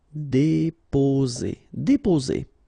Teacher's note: only one S between two vowels, so the sound is Z.